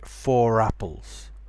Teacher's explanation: more people, are starting to pronounce the R when there's a vowel after it.